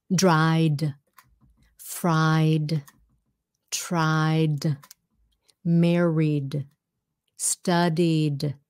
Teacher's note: when you add IED it's going to sound like a d